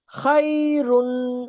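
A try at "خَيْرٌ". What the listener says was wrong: खैरुन, खै नहीं खौ। खै नहीं, खोई खौ। वक्फ। खैर, रॉ साकिन। रॉ साकिन भी होगी और बारीक होगी, मोटा करके नहीं वक्फ करना। खैर नहीं, रो नहीं करना, खैर। रॉ का पता ही नहीं चले।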